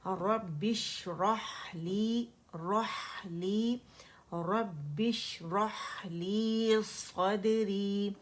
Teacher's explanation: شین جو ہے اس میں رخاوہ ہے، اور اس کی شاورنگ ساؤنڈ یعنی تفشی جو ہے وہ ہم نے شو کرنی ہے